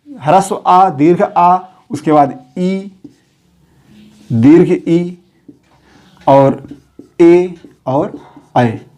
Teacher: इन्हें बोलते समय होठ की आकृति अर्धगोलाकार या गोलाकार नहीं होगा। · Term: अर्धवृत्तमुखी